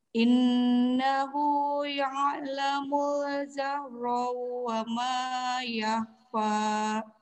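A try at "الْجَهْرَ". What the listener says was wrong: Iya, coba huruf jim. Ja, ji, ju, jahro, jahro. Yang tadi agak ke zai dikit ya. Innahu ya'lamul jahra wa ma yakhfa.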